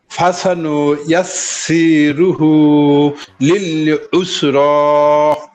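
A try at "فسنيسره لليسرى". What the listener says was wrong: এবার মনে হয় যে এখানে প্রথম অংশে মনে হয় হরকত টান হয়ে গেছিল হরকত গুলো একটু খেয়াল রেখো।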